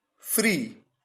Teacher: यहां पर दो वॉवल्स ई, दो बार ई का यूज हुआ, लेकिन केवल एक वॉवल साउंड जनरेट हो रहा है और वो है बड़ी ई का ई।